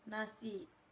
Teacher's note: konsonan nasal dental yaitu n